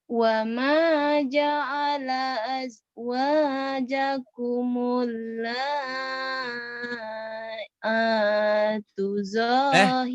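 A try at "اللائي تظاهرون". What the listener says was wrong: Lai bukan laa ya. Lai tuh zahirin. Lai saya bilang oh, suaranya kayak ngemut permen lah.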